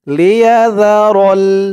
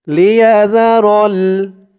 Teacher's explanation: এই জালের উচ্চারণটা কিন্তু একদম নরম পাতলা হবে। জিহ্বার মাথা উপরের দাঁতের মাথার সাথে লাগবে জালের উচ্চারণটা করার সময়।